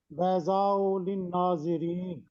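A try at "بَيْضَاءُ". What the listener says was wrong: ہاں جی بیضاء، مد کو لازمی پڑھا کریں سر، خوبصورتی آتی ہے. تو جب آپ پڑھ جاتے ہیں تیزی سے پڑھتے ہیں، آپ اس کو تھوڑا سا آرام سے پڑھ دیا کریں، کوئی مسئلہ نہیں انشاءاللہ.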